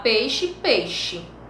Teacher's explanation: às vezes, as pessoas falam sem pronunciar semivogal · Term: ditongo decrescente